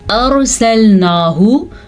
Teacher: रॉ साकिन है और रॉ से पहले हर्फ पे ज़बर है तो इसलिए रॉ मोटी यानी कि पुर करके पढ़ी जाएगी।